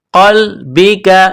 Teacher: قاف کو لام کے ساتھ پلس کرنا ہے، قاف کو موٹا کرنا ہے